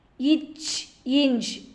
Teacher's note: நாவின் இடை நடு அன்னத்தின் இடைப்பகுதியை பொருந்துவதால் பிறக்கும் மெய்யெழுத்துக்கள்